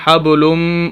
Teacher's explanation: میم مشدد ہے، میم مشدد پر ہمیشہ غنہ ہوتا ہے